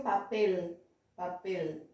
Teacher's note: A consoante L, no final de sílabas, você vai dobrar a língua.